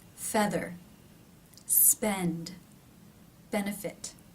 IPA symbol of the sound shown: ɛ